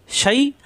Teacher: জিহ্বার মাঝখানে উপরে তালুতে শাই